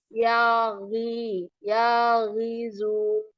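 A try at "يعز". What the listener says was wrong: Kalau ain bukan ya rizu, itu ya izu. Kalau ya rizu artinya dia atas ainnya ini ada titik ya rizu. Ini ya izu. Izu.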